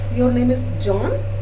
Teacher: हमारा intonation rise हुआ है जब हमने ये वर्ड बोला है John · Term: राइजिंग इंटोनेशन